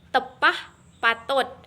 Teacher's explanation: huruf T merupakan kontoid plosif apiko-alveolar, tak bersuara dan tak beraspirasi